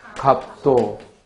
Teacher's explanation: 음절 끝에 오는 겹받침은 비읍 하나의 대표음만 나요. 그리고 두 개의 자음이 어울려 있어서 자음군인데 그 대표음 비읍만 남았으니까 이때는 탈락이 일어났고 이를 자음군 단순화라 해요.